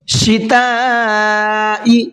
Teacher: शिताई, यहाँ पर बड़ा मद है, इसको 4 से 5 अलिफ की बराबर खींच करके पढ़ेंगे, यानी कि ज़्यादा खींच करके पढ़ेंगे।